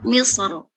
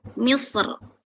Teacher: Jadi saat wakof dia bisa dibaca tebal atau tipis. Tapi afdolnya lebih utama dibaca tebal atau tafkhim.